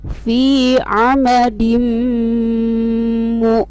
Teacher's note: itu tanwin kasroh bertemu huruf mim, maka dibaca dengung atau gunnah. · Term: idgham ma'al gunnah